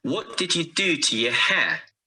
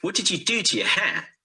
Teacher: our next sentence what did you do to your hair here what do and hair are stressed you to and your are weak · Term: stress and weak forms, weak forms